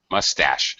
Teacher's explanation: most two-syllable nouns in english have first syllable stress but mustache has second syllable stress